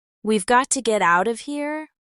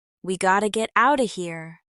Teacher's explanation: Notice how got to becomes gota and out of becomes out ofa.